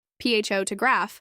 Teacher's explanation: the word photograph has stress on the first syllable